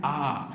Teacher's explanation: पूरा मुंह खोलना पड़ता है। और आवाज़ कहाँ से आ रही है, कंठ से आ रही है